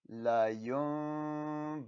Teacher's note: Don't forget to do the ghunna on the noon.